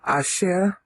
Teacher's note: Asher, here it's accented on the last syllable.